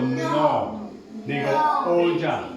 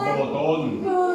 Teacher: en español cuando pronunció la o mis labios se redondean